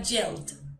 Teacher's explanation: como termina en doble L, agregamos la ed y suena solo el sonido de la D.